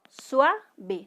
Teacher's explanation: aquí hay un diptongo, no se separa la U de la A porque es un diptongo